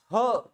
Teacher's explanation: फुफ्फुसात जेवढी हवा असेल ती बाहेर फेकल्या जाते म्हणजे मोठ्या प्रमाणात हवा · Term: महाप्राण